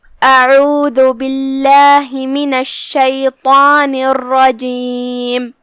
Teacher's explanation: پھر حرف العین ہے، عین کو ہم حلق کے درمیان والے حصے سے ادا کرتے ہیں